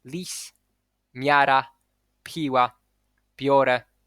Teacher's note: When there is a consonant that is not palatal or alveolo-palatal and is followed by I, ya, palatal or alveolo-palatal consonant, it gets palatalized, which means that the center of the tongue moves more or less towards the hard palate as you pronounce the consonant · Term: palatalization